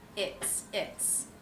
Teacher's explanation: the s in its is pronounced as an S sound unvoiced that's because the sound before is the T also an unvoiced sound